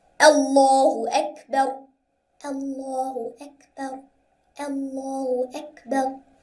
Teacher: Over here in Allahu Akbar, the Hamza has Fatha on it, and it is before the Laam of Allah. So we must make the Laam of Allah thick.